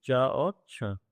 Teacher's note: तालु से बोले जाते हैं